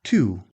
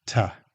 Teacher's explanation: To. In careful speech, this sounds like to. In everyday conversation, it's tuh.